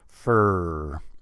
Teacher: In America and Canada, we want to hear a nice full R. Make that nice and long and loud. Make sure everybody hears it.